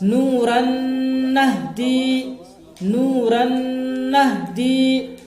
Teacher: اب تنوین کی مثال دیکھیے آپ، نورن نہدی، نورن نہدی، تنوین ہے، تنوین کے بعد حرف ادغام میں سے نون آیا ہے، تنوین کو نون سے ملا کر غنہ کے ساتھ پڑھیں گے